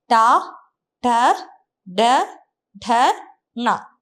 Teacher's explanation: ട എന്ന് പറയുമ്പോൾ നമ്മുടെ നാവ് ഒന്ന് മടങ്ങി നാവിന്റെ ഏറ്റവും സെന്ററിൽ ഒന്ന് തൊട്ട് വന്നു ട ട എന്ന് പറഞ്ഞു നോക്കിയേ അപ്പൊ നാവ് ഒന്നുകൂടെ ഒന്ന് മടങ്ങി കുറച്ചുകൂടെ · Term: മൂർധന്യം